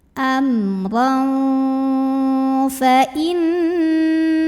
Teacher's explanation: Kemudian di sini ada ikhfa ausat karena ada tanwin fathah yang bertemu dengan huruf fa. Maka tanwin fathahnya dibunyikan samar-samar mau bilang fa sambil ada dengungannya. Jadi saat kita membunyikan tanwin, maka posisi makhraj kita siap-siap ke fa.